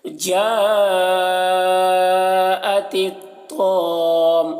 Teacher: اب یہاں پر دیکھیے طا کو موٹا کر کے پڑھ رہے ہیں اور یہاں پر مد لازم ہے کیونکہ حرف مد یہاں پر الف ہے، اس کے بعد میم ہے جس پر تشدید ہے، تو مد لازم ہے تو 3-4 الف کے برابر کھینچ کر پڑھیں گے.